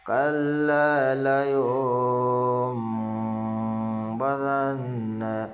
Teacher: اخفا کے ساتھ غنہ بھی ہوگا، دونوں چیز ایک ساتھ میں ہوگا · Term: اقلاب